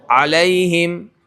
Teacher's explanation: لیکن جب لام کی ادائیگی کریں گے تو لام کے اندر آواز کا زور آپ دیکھیں گے لام کے زبان کے نوک کے اوپر